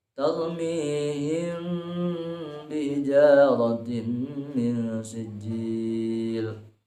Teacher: Kalau iqlab itu bisa dirapatkan, kalau ikhfa syafawi dibukakan sedikit, disamarkan ya, tidak ditutup rapat mulutnya.